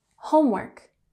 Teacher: we have emphasis on the first syllable